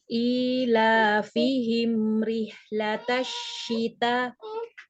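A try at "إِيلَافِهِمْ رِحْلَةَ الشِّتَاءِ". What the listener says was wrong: Masih pendek ya. Rihlata ya, jadi sama panjangnya.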